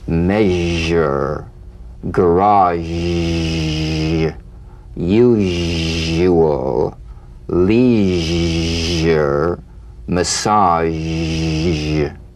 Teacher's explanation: Cognate, the voiced tongue blade S sound consonant. Make the whispering SH and add vocal resonance. All suggestion of the SH must vanish. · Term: zh